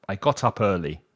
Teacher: There I pronounced the T because I joined it with the sound of the up.